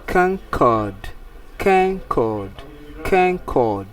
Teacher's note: Then say it's a noun. Then the stress fall on the first syllable.